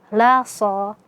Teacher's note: La so, lamnya tipis, sadnya tebal ya